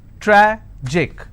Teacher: Tragic, tragic, I will stress on tra.